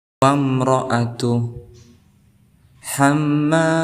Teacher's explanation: Ada huruf ra berharakat fathah, maka kita hukumi sebagai tafhim. Wamra, tebal, artinya tebal.